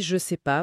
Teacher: dans la conversation courante rapide, ce e il est souvent avalé et l'idée on dit je sais pas plutôt que je ne sais pas.